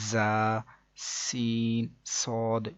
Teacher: زا، سین، صاد کو ادا کرتے وقت سیٹی کی طرح کی آواز نکلتی ہے، اس لیے ان حروف کو حروف صفیریہ یعنی سیٹی والے حروف بھی کہتے ہیں، جیسے کہ زا، سین، صاد۔